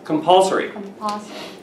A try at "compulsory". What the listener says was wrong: I want to get that R out of you.